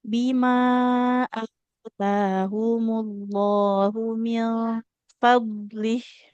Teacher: Hamzahnya fathah ada alifnya. Taknya juga fathah ada alif di depannya. Ini sama-sama harus kita panjangkan.